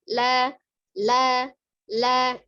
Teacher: La, la, la, ya. Jadi ujung lidahnya ya yang menempel, tidak punggungnya. Jadi tidak dilipat la, ada al, tidak ya. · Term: huruf lam